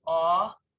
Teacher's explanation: so they're saying it's o as in thought it's awe that's an ashkenazi pronunciation